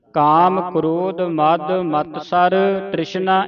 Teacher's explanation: ਮਤਸਰ ਮਤ ਜਿਹੜਾ ਭਾਰਾ ਬੋਲਣਾ ਅਧਕ ਲਾ ਕੇ